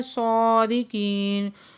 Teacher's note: صا کو پورا آواز سے پڑھیں گے کیونکہ حروف مستعلیہ میں سے ہے، اور صاد کے اوپر کھڑا زبر ہے، دو حرکت کھینچ کے پڑھیں گے۔